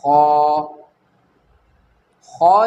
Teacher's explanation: अदना हलक के ऊपर के हिस्से से खौ अदा होता है, हलक के ऊपर के हिस्से से खौ अदा होता है।